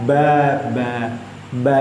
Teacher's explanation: ba itu pertemuan antara dua bibir bagian atas dan bawah yang menempel